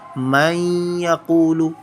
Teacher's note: It will not be ikhfa, but with ikhfa we recite it as man yaqulu. We hide the sound of noon in our nose